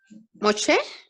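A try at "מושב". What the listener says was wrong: Moshab. Claro, la Shim va acompañada de una A y una Bet. Entonces leeríamos Moshab. Moshab.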